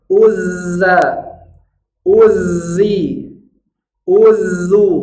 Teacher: tasdidnya keluarkan dua kali lipat bunyi safir